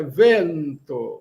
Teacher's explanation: No português nós nasalizamos. No Esperanto é vento, sem nasalizar.